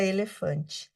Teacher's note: mais ao sul a vogal fechada